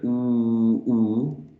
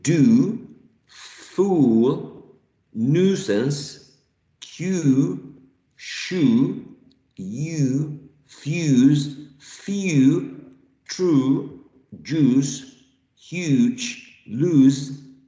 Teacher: The lips are closely rounded and slightly protruded